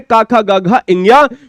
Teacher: वो गले के अंदर जीभ के पिछले हिस्से से आवाज आती है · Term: का वर्ग